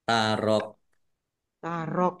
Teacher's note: Kapnya dibaca sukun karena wakof ya, dan dibaca pendek karena tidak ada tanda panjangnya.